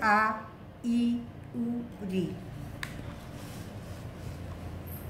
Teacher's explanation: ऐसे स्वर वर्ण जिनके उच्चारण में ह्रस्व स्वर की अपेक्षा 2 गुना समय लगता है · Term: दीर्घ स्वर